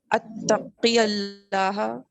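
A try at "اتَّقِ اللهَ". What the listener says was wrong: یہاں پر زبر نہیں پڑیں گے. اتق اللہ، اتق اللہ کا جواب اتق اللہ. اتق اللہ اتق اللہ ملا دیں گے نا تو یا پھر ڈراپ ہو جائے گا.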